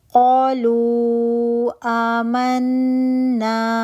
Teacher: واو مدہ بن رہا تھا اس کو آپ نے 4 to 5 کاؤنٹ تک لمبا کیا